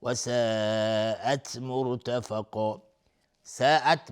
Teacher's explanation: ساعت مد واجب متصل به مقدار 4 تا 5 حرکت وجوبا مد میخواد